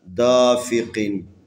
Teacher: یہ قاف ہے، حروف استعلاء میں سے، اس کو موٹا پڑھنا ہے ہمیشہ